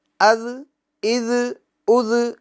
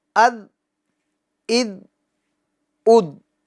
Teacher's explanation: زا سختی سے ادا ہوتا ہے از، اور یہ ذال نرمی سے ادا ہوتا ہے اد، اور ذال کو ہمیں باریک کرنا ہے۔